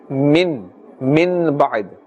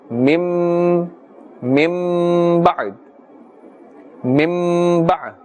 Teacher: Now we are pulling or elongating the sound because iqlab is taking place, and therefore we must do ikhfa. We change the noon sakin, the sound of this, into a mim, and we do ikhfa.